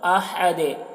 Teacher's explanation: یہاں پر وقف کریں گے تو دال میں قلقلہ ہوگا، أَحَدٌ دال کی آواز ٹکرا رہی ہے